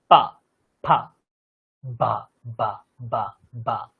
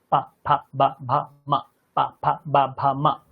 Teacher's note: পা ফা বা বা বা বা। প যেমন দুটো ঠোঁট জুড়ে, ফ যেমন দুটো ঠোঁট জুড়ে, ব তেমনই দুটো ঠোঁট জুড়ে উচ্চারিত হবে। আর যেই ব দুটো ঠোঁট জুড়ে উচ্চারিত হবে সেটি হচ্ছে পেট কাটা ব, পবর্গের ব।